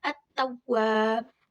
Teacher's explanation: Cara membacanya dengan mengidghamkan atau mentasydidkan pada huruf hijaiyah sehingga alif lam tidak terbaca meskipun tulisannya ada. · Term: idgham syamsiyah